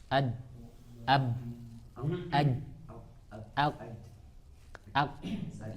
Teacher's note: Ada yang huruf itu dia syadidah dan majhurah. Dia tertahan suaranya sekaligus dia tertahan nafasnya sekaligus dengan suaranya.